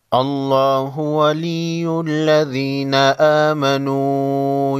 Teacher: لفظ اللہ کے لام کو موٹا پڑھیں گے